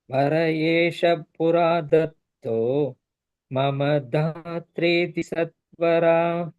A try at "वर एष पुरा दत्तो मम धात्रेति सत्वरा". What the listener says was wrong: very good धात्रेति correct सत्वरा very good